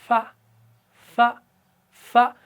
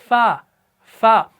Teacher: तो आपने ये जो ऊपर वाले दांत हैं इनके किनारे का अंदरूनी निचले वाले होंठ के तर वाले हिस्से से लगाना है, तब जाके अदा होगा